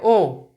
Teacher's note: उ से थोड़ा सा ज्यादा मुंह ओ में खुलता है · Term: अर्ध संवृत स्वर